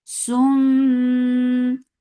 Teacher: this is idgham with gunna, so keep the sound in your nose for a longer time